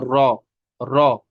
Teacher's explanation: जुबान की नोक, टिप, ये लगती है ऊपर तालू के साथ, मुकाबिल तालू के साथ, तो अदा होता है रॉ। रॉ में सिफत तकरीर है, रिपीटिशन की एक सिफत है, लेकिन उस सिफत को हमें बस एक बार रिपीटिशन होना चाहिए, तो अदा होगा रॉ, रॉ।